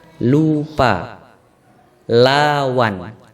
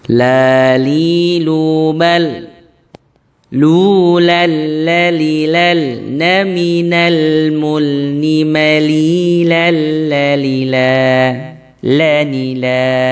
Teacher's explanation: lam dalam bahasa Arab itu agak maju lagi ke depan mendekati gigi seri, tapi tidak menyentuh gigi seri ya. Jadi antara tengah-tengah langit-langit mulut kita, kemudian maju, jangan sampai ke gigi seri.